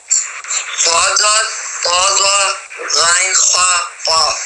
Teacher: یہ حروف جہاں بھی قرآن میں آتے ہیں وہ موٹے ہی پڑے جاتے ہیں، بھاری پڑے جاتے ہیں، پر پڑے جاتے ہیں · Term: حروف مستعلیہ